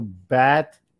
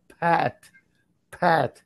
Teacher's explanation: Because B is B and P is P, P. There's aspiration. You can feel the air. And with B, there's no.